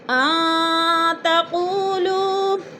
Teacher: نون ساکن کے بعد تا گیا ہے تو ادھر اخفا کریں گے